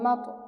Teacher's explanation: তর উপর সাকিন অর্থাৎ কলকলা হরফের উপর সাকিন আমরা কলকলার প্রতিধ্বনি করে পড়ব।